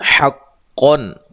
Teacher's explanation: قاف کو موٹا ادا کرنا ہے، نون تنوین کا یہاں اظہار ہے